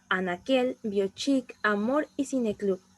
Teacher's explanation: La palabra aguda que no lleva tilde, una de las formas más prácticas de identificarla es mediante la vocalización, ya que cuando vocalizamos esta tenemos que fijarnos que la fuerza de voz siempre va a recaer en la última sílaba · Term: palabras agudas